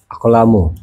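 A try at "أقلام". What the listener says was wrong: Aklamun. Mun. Tanwin. Jangan lupa ya. Af'alun panjang. Ahjarun, aklamun, auladun. Itu sama wazannya.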